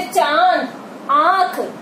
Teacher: मुंह और नाक से बोले जाने वाले जो वर्ण होते हैं उनको जो है हम क्या कहेंगे, अनुनासिक। जो चंद्र बिंदु लगा होता है ये अनुनासिक कहलाता है।